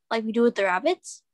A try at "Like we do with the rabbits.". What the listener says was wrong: Not a question. Try it again. And so you need to slow down.